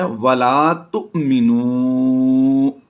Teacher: حمزہ ساکنہ کو ہم نے جھٹکا دے کر پڑھنا ہوتا ہے